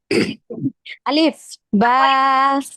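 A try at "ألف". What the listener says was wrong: এটা হচ্ছে আর একটু দ্রুত আলিফ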